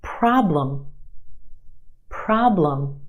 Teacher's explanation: Two syllables in this word. Our first syllable is emphasized. The a problem is stretched and emphasized in the first syllable.